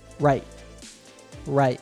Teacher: glottal stop which is common in both British and American English a stop T is made the same way as a regular T only you don't let the air out · the T at the end of right is pronounced with a glottal stop which is common in both British and American English